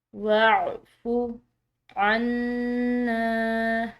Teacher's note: نون مشدد ہے تو اس مشدد نون پر غنہ کریں گے